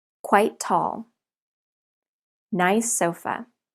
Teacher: we link these because the sounds are the same even though the spellings are different